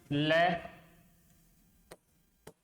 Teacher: ल का उच्चारण स्थान भी दंते होता है